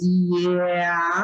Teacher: É uma gradação, a gente faz I, E, A, e a gente consegue perceber que a língua está sendo rebaixada, então existem sons intermediários aqui, mas esses são os que a gente chama de fonemas.